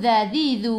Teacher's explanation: Hujung lidah keluar pada gigi depan.